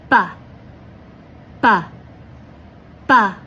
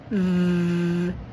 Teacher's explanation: But for the V sound, your bottom lip should be on your top teeth. V. You will vibrate and send air out. Make sure you have some vocalization.